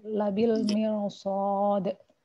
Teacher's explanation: Ro sukun dibaca tafkhim. Ilatnya walaupun ro sukun berupa huruf berharokat kasroh asliyah yang terletak dalam satu kata, namun sesudah ro sukun berupa huruf isti'ala yang tidak berharokat kasroh, maka dibaca tafkhim ya.